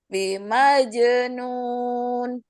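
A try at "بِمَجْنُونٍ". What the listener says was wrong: Oke, terlalu pendek nun di belakang, jadi tawasutnya kurang. Bima jenun. Ennya, yang ennya. Nun.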